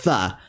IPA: θ